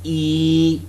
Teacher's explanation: what happens when you say the sound e the lips are not rounded rather spread